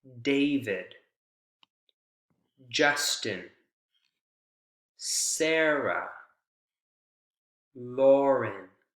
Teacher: the first syllable is the strongest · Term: first syllable stressed